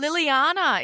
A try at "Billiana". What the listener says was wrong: B for Bob, Billiana.